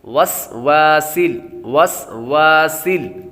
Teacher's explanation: وس یہاں پر سین ہے تو سین حروف صفیریہ میں سے ہے تو سیٹی کی آواز آئے گی، آگے بھی سین ہے تو سیٹی کی آواز آئے گی۔